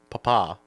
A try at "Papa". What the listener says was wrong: You put the wrong emphasis on the wrong syllable.